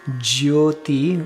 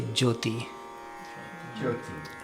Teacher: That Y can be pronounced a lot or hardly at all. You can say jyoti, where you're really putting the Y in there.